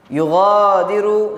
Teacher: Yughadiru gha tu mad asli dua harakat.